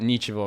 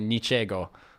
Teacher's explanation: Like, yeah, well, like the Russian word like nichevo, which means nothing, and the Russians and the Polish say niczego, which is like because the G in Russian and it's in the middle of the word, it's like pronounced soft like a V